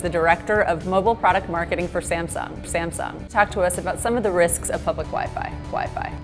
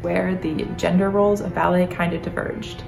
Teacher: young American women ending practically every sentence in vocal fry